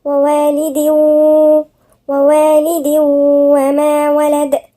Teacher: تنوين وبعدها الواو، والواو مش من حروف الاستثناء، يبقى هنغن فيها